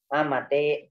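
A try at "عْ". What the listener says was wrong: Ain mati. Ain mati, bukan A mati. Lihat hurufnya. Ain apa H itu?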